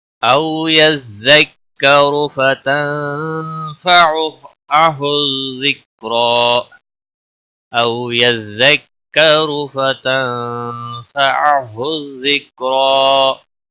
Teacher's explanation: را پیش کی وجہ سے پر پڑھا جائے گا